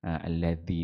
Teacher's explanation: Alladhi dhal tu pastikan dia antara dua gigi kita lah. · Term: huruf dhal